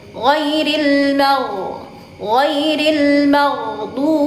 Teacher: huruf ghin atau huruf gha tidak memantul ketika sukun, tidak memantul.